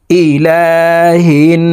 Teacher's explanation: নুনের সাথে নাকের পাশে থেকে তিন সেকেন্ড পরিমাণ গুন্না করে ধরে রাখবো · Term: ওয়াজিব গুন্নাহ